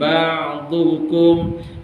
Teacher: Ain ni dari segi suara dia tengah-tengah ya. Tak terlepas sangat, tak tertahan sangat. Ba'dukum dia mengalir, maknanya ada aliran suara dekat situ.